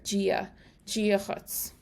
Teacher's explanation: the D in dia is pronounced like a J or a G sound, especially in Ulster